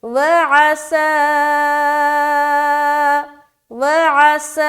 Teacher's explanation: سین میں سیٹی بھی ظاہر ہو رہی